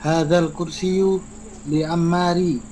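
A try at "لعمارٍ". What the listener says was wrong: Li Ammarin. Tanwin ya. Liman hadzal kursiyu li Ammarin.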